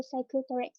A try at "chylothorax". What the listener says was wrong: It's not cyclothorax, it's chylothorax. Yes, CHY. Chylo. It's chyle.